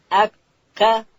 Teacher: کاف ادا کیږي د ژبې پای به لوړ تالو ته ورولو د قاف د مخرج څخه لږ ښکته د خولې و طرف ته